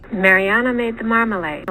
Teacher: You can hear she's going down to the bottom end of her range as usual. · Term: low low boundary tone, low boundary tone combo